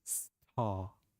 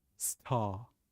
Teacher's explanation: British English, the gentle R is silent. We don't pronounce the R.